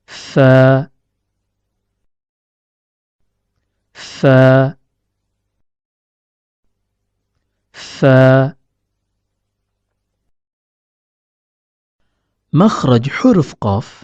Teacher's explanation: huruf Fa keluar dari pertemuan antara ujung gigi seri atas dengan bagian dalam bibir bawah